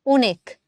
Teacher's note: যখন অধ্বনিটার উচ্চারণ অ এর মতো হয় তখন সে উচ্চারণগুলোকে আমরা বলি হচ্ছে বিবৃত উচ্চারণ। আমি আবারও রিপিট করছি, যখন আমার অধ্বনির উচ্চারণ অ এর মতো হচ্ছে তখন আমি সেটাকে বলছি বিবৃত উচ্চারণ।